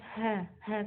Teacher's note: sekali di bahan kemudian kita kehancuran halus adalah mengalir nafas contohnya huruf ha ha ketika mengucapkannya sambil mengalirkan nafas